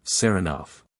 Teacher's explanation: he pronounces the name with the stress on the second syllable